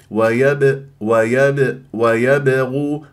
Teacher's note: الباء مقلقله قلقله صوره في وسط الكلام تضرب المخرج وتهرب بسرعه